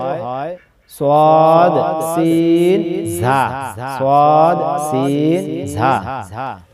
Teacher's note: জিহ্বার আগা সামনের নিচের দুই দাঁতের পেট ও আগার সঙ্গে লাগাইয়া তিনটি হরফ উচ্চারিত হয় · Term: 12 নাম্বার মাখরাজ